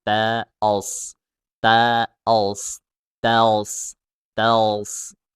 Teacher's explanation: Ketika tels, huruf so-nya ketika mensukun so itu dinaikkan pangkal lidahnya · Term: huruf so ditebalkan